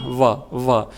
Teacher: व का उच्चारण दांत और ओष्ठ से होता है ना, व, तो ये दंतोष्ठ कहलाता है।